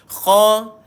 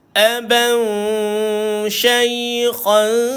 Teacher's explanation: Jangan lupa makhraj kha duduk dekat hujung kerongkong.